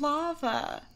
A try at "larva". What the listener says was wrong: Oh, it sounds like lava.